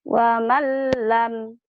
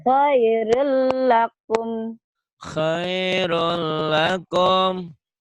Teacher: dimasukkan, diidghamkan, dileburkan tanpa disertai dengung. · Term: idgham bila guna